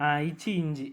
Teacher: நாவின் இடைப்பகுதி நடு அன்னத்தின் இடைப்பகுதியை பொருந்துவதால் பிறக்குது